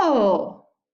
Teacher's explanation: we're falling and then rising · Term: fall rise